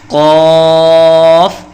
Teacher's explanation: یہ ایک بہت موٹا حرف ہے، زبان کی جڑ کو تالوں کے نرم حصے سے لگا کر اسے خوب بھاری آواز میں پڑھا جاتا ہے